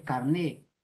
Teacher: eso es el origen de la palabra, viene del francés, pero aún el francés no se pronuncia la T, solo es carné